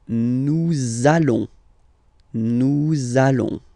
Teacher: you want to make this beautiful and little liaison, so this little link between the words, so it does mean that you will have to pronounce this z sound